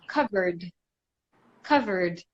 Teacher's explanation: the last sound in cover is that R. Can we feel it? Yes, we can. So that's a voiced sound. So we take the D, covered, covered, right?